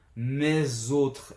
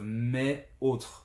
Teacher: So for example, in French, when a determiner that ends with an S is followed by another word that starts with a vowel sound, then we tend to apply a rule that is called the liaison and to connect them with a Z sound. Mes autres instead of mes autres.